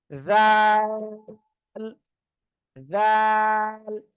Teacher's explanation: জিহ্বার আগা সামনের উপরে দুই দাঁতের আগার সঙ্গে লাগান